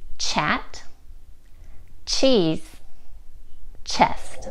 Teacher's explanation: you shouldn't feel a vibration when you make the ch sound because it's a voiceless sound